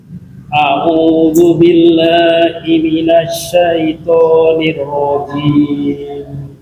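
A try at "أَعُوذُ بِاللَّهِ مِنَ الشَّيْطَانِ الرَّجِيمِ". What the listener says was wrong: Ya, masih itu. Jim seperti J. Jim, jangan zim, ada tadi ada seperti zim gitu.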